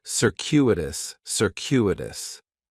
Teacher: The stress is going to be on that second syllable. And that cu is kind of like you're saying the letter Q.